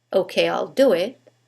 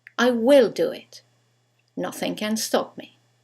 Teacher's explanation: when we use the contraction there is no stress on the contracted form